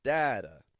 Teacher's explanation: Strong D in the beginning, flap T on the end, with a schwa.